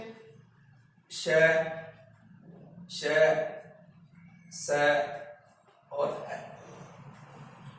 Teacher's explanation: हवा मुख द्वार में बाधित होते हुए अर्थात संघर्ष करते हुए मुख द्वार से बाहर निकलती है, जिस कारण से यहां संघर्ष पैदा होता है और संघर्ष होने के कारण से वो हवा गर्म हो जाती है, जिसे हम क्या बोलेंगे, ऊष्म व्यंजन बोलेंगे।